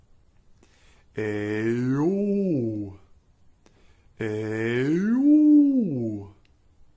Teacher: we are going to start on the A, and slide our pitch upward, really digging into the yo half of the sound so that it makes our larynx lower